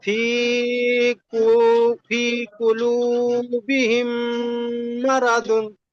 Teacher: মিমকে মিমের সাথে মিলিয়ে এক আলিফ পরিমাণ গুণনা সহ পড়তে হয়, একে ঈদগামে সাফাবি বলে।